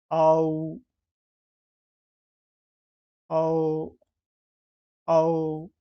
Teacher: अ से जब हम ऊ तक जाते हैं तो हमें प्राप्त होता है औ